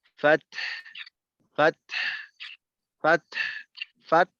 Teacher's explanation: তায়ের উচ্চারণ হওয়ার পর হায়ের মাখরাজেও গিয়ে কিছুটা আওয়াজ বের করতে হবে